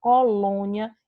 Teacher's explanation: complexo ele ao contrário ao invés da gente ter lá aberta a gente vai ter né a nossa boca o nosso timbre ele vai estar fechado